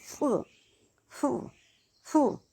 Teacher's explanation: लेकिन जब हम फ बोलते हैं, फ फ इसमें जो नुक्ता लगा होता है, इसमें हमारे होंठ टच नहीं करते हैं और हमारी हवा जो है मुंह से वो बाहर को निकलती है।